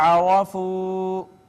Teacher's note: را مفتوح ہے لہٰذا اس کو مفخم پڑھیں گے، واو مدہ ہے، پھر واو مدہ ہے، را کو بھی پر پڑھا جائے گا۔